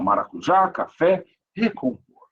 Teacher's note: a sílaba mais forte é a última.